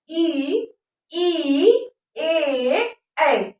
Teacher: जीभ के आगे का भाग इन स्वरों में काम करता है, अग्र भाग काम करता है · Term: अग्र स्वर